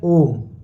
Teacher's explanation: तो यहाँ पे ओम है, ओम में भी ये वाला साइन लगा है, तो यहाँ पे ओ को ये क्या बताना चाह रहा है, ये बताना चाह रहा है ये साइन कि ओ को बस तुम ओम मत पढ़ो, ओ को तुम ओ पढ़ो, थोड़ा लंबा खींचो, है ना, 3 मात्रा काल का समय दो। तो इसलिए हम ओम को ओम ना पढ़ के ओम पढ़ते हैं ना। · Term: प्लुत स्वर